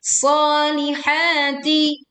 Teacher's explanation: ha dibaca panjang 2 harokat · Leburkan alif lam ke huruf shad sehingga alif lam tidak dibaca, langsung menekan ke shad dengan suara yang tebal dan suruh tajam juga muncul.